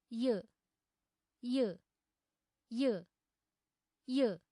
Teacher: य उच्चारणसमये जिह्वायाः तालुस्पर्शः भवति किल? अतः य वर्णस्य उच्चारणस्थानं तालु अस्ति